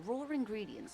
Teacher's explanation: the W doesn't actually make a sound. It's just the ah. So it's just an ah, just a vowel with no consonant at the end. · And then the next word, ingredients, also starts with a vowel, no consonant. So again, because it's a British actor, she has to put an R in there